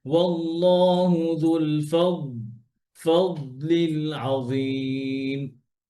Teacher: ধরে পড়তে হবে, দদ যেন কলকলা না হয়ে যায়